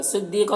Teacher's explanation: صاد کو پر پڑھیں گے، حروف مستعلیہ میں سے، دی میں یا مدہ ہے، ایک الف کے برابر کھینچیں گے۔